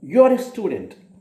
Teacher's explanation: you are a student I'm saying with a falling Tone